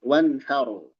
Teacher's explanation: Ronya tebal karena dia sukun sebelumnya fathah.